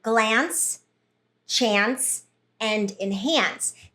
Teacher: And in these words, it has that nasalized A. So that changes the sound of that vowel.